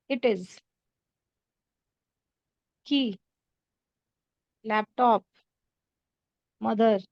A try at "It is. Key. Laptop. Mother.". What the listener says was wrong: No problem in pronunciation. Very good.